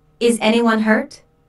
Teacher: This is a yes/no question, so the intonation rises at the end. Notice how this question is asked in a worried way.